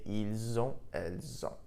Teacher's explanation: the S in il, elle, which is normally silent, was actually pronounced, and I pronounced it like a Z · because on, O-N-T, begins with a vowel sound, we link the two sounds together.